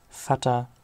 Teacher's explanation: vater mit manchen dialekten noch kurz aber hoch sprachlich lang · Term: vokal dehnung